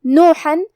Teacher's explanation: حرف الحا کو ہم حلق کے درمیان والے حصے سے ادا کریں گے